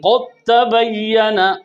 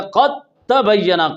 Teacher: اب ادغام اس لیے کہتے ہیں پہلا ساکن دوسرا متحرک ہے، صغیر اس لیے کہتے ہیں ادغام اس لیے کہتے ہیں کہ دال تا میں داخل ہو رہا ہے، اور متجانسین اس لیے کہتے ہیں کہ دال اور تا کا مخرج ایک ہے، اور تام دال تا میں پورا داخل ہو گیا، بن گیا قد تبین، قاف سیدھا تا سے ملے گا، لہذا متجانسین ایک مخرج کے دو حرف۔ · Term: ادغام صغیر متجانسین تام